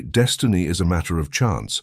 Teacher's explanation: emphasizing each syllable equally as if placing the same emphasis on each word